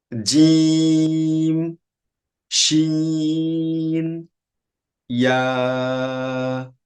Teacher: জিহ্বার মাঝখান থেকে মুখের তালুতে স্পর্শ করে উচ্চারণ করা হয়